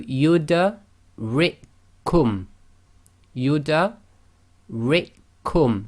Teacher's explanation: we would join the ra with the kasra directly to the second kaf.